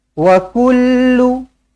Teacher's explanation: Jangan sampai tertukar jadi wa kulla. Jangan sampai tertukar jadi wa kulli. Lamnya berbaris hadapan.